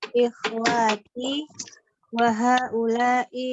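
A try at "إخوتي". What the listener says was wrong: Wawunya jangan panjang. Wawunya jangan panjang. Ikhwati gitu ya.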